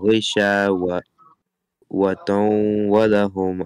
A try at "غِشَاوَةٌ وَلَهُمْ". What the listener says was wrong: It is not taun, it is tun. It is double tun. Space here. غِشَاوَةٌ وَلَهُمْ